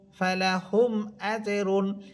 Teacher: মিম সাকিনের পর হামজা গুন্না হবে না